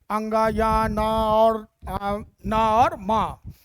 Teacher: नासिक क्यों कहते हैं, क्योंकि जब इनका हम लोग उच्चारण करते हैं तो जो हवा होती है वह नाक और मुंह दोनों से निकलती है, ठीक। और आपको महसूस होगा कि नाक से बोल रहा है व्यक्ति, ठीक।